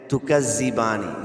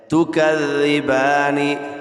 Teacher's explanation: زبان کا سرہ اور دونوں دانتوں کے اندرونی کنارے سے ذال ادا ہوتا ہے